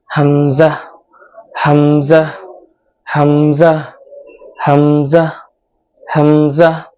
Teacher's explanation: হামজা উচ্চারণ করতে হবে গলার শুরু থেকে, আওয়াজটা ভিতর থেকে আসবে।